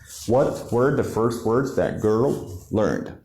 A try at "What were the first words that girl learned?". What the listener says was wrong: Yes, but you need to stress the main words.